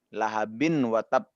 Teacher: Tapi karena ini kita membaca Quran, kita harus memasukkan nun mati itu ya. Menjadi dengung karena dia bertemu dengan huruf waw ya, huruf-huruf di lisan. Pokoknya huruf yang di lisan ini ya, ini hukumnya idgham betul.